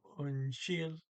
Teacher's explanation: and the D on the end there is not pronounced